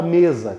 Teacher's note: Me é a sílaba tônica, em contrapartida o SA, o ZA, a pronúncia ZA, é a nossa sílaba átona.